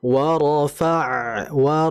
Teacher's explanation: Dan kemudian huruf ain ini memiliki sifat yang disebut dengan sifat tawassuto, atau dia dialirkan hurufnya. Jadi kita alirkan wa rafa'na.